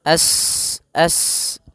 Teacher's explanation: sifat mengalirnya nafas atau berdesis seperti suara burung